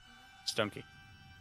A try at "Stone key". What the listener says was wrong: Stone key. It's like Dogman. You have to say it as one word. Stone key.